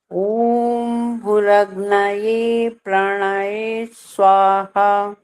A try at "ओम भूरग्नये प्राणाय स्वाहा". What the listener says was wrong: अभी मैंने बहुत बार ये वाली बात बोली है, प्राणाय नहीं बोल सकते ना, प्राणाय, य का जो साउंड है य वाला निकालो ना। जब बोलते हैं यज्ञ, तो ये यज्ञ थोड़ी बोल रहे हैं हम, यज्ञ बोल रहे हैं ना। तो जो पहला अक्षर है य, वही आना चाहिए।